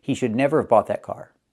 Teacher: We can say he should never have. We cannot write never of, but we say it. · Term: reduction